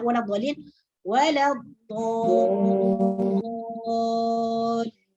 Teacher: Sedangkan mad lazim kalimi musaqqal, ya, huruf mad yang diikuti huruf mati tersebut diidghamkan, tidak dibaca jelas.